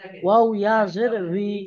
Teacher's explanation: জের যেটা হবে, হুম বি হবে না আর পুরো ভি হবে না। ওয়াও ইয়াজের বি হুম হবে না, ওয়াও ইয়াজের ভিও হবে না, এই দুটোর মাঝখানে থাকবে।